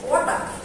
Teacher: Some Indian English speakers might use a flat sound for the T sound in certain positions, similar to how it might be pronounced in their native language. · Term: flat-T